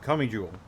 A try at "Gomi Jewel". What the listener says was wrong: Gomi Jewel. All right, you said go, right? There's like a g. sound. No. It sounds more like it's coming out like a cuss sound. It's more of a g sound.